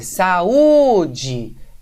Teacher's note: você vai ver que a sílaba tônica é o U, não é? É o U sozinho.